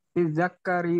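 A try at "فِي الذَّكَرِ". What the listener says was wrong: Itu fidzakari kafnya itu enggak tasdid ya. Fidzakari, zalnya aja yang fidzakari karena ada al.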